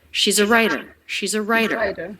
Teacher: she's a writer again linked together really smoothly there's no break the letter a the article a here is the schwa she's a so the apostrophe s is a z sound it